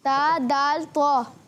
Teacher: زبان کا سرا. جب زبان کا سرا اوپر والے دانتوں کی جڑوں میں لگتا ہے تو ادا ہوتا ہے تا